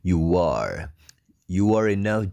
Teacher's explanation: As You are u ketemu A jadi disambung pakai W